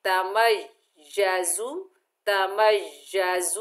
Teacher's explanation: और मीम के ऊपर जबर है, आगे या मुशद्दद है, मीम को या से मिलाएंगे। मुशद्दद हर्फ को मजबूती और जमाओ से पढ़ा जाता है, थोड़ी देर रुक कर पढ़ा जाता है, 2 हरफ की अदायगी के बराबर देर लगाकर पढ़ा जाता है। देखिए तमय्यज़ु, तमय्यज़ु, और जा को सख्ती और सीटी से अदा करेंगे, तमय्यज़ु मिनल गैज़।